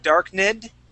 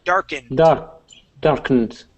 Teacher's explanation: we're going to jump from that N sound right to the D.